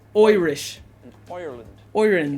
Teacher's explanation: The I that we get in like or height, and even at the beginning of the word Irish. It becomes like an oi. Oi. Almost like the oi Irish. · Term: I sound